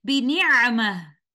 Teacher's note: तिलावत को रोकते हुए हम ता मरबूता को है साकिना में बदलते हुए इस तरह से रुकेंगे